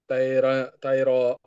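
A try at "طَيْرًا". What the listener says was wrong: దీర్ఘం తీయకూడదు. త్వరగా చెప్పండి. తైరన్.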